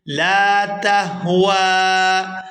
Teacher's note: یہاں واو پر کھڑی زبر ہے اور مد ہے تو اس کو 3 سے 4 الف کھینچ کر ادا کریں گے۔